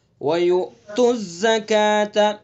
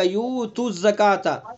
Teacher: یا کے بعد حمزہ، اس کے اندر ہلکا سا جھٹکا لگے گا، اگر ہم نے جھٹکا نہیں دیا اس کے اندر تو ابدال ہو جائے گا، یعنی یہ حمزہ ختم ہو جائے گا، یو تو ہو جائے گا، یو تو زکات.